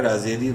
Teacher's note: راز کے نیچے زیر ہے، را کو باریک پڑھیں گے